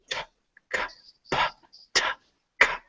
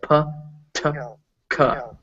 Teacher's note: If you feel your mouth, you go t, k, p, t, k, and put a hand up to your mouth, you'll feel that little puff of air.